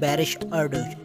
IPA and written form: baˌɾɯʃ aɾˈdutʃ (Barış Arduç)